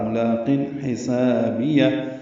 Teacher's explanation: ہا وسط حلق سے ادا کریں گے